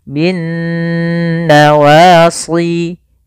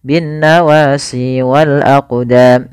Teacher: sendiri ini ada hukum tajwid berupa bacaan gunnah yaitu NU terjadi Apabila ada nun berharakat tasydid atau mim berharakat tasydid cara membacanya yaitu suara nunnya kita tahan